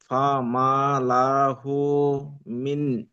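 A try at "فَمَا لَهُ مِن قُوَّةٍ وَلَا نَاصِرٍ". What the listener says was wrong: মিন নয়, মিউ, sorry, এখানে মিয়া গুণনা করতে হবে, নুন সাকিনের পরে কফ রয়েছে। ফামা লাহু মিন কুওয়াতিন ওয়ালা নাসির।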